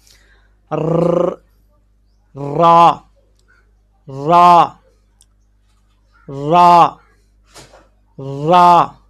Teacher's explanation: زبان کے کنارے کی پشت جب اوپر والے 3 دانتوں کے مسوڑوں سے لگے تو اس سے را ادا ہوتا ہے